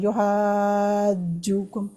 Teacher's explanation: اچھا اس کو کہتے ہیں، اور اس کی حرکت ہوتی ہے 6 حرکتوں جتنی، یعنی اس کو اتنا لمبا کرنا ہوتا ہے۔ یہ الف جو تھا حرف مد تھا، اس کے بعد جیم آ گئی شد والی، لہٰذا یہاں پہ ایک آٹومیٹکلی اکارڈنگ ٹو تجوید ایک مد بن جاتی ہے، تو تبھی اس کو ہم پڑھتے ہیں 6 حرکت جتنا لمبا